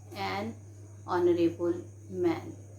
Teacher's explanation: some of the words they are beginning with H, but H here is silent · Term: H is silent